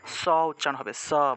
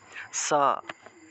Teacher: এটা হলো দন্তস্য, দন্ত মানে হলো দাঁত, দাঁত দিয়ে উচ্চারণটা আসবে, স উচ্চারণ হবে, স, বাতাসটা এসে দাঁতের মধ্যে ধাক্কা লাগবে, স, কেমন? আচ্ছা, তারপরে দেখুন অন্তস্থ জ।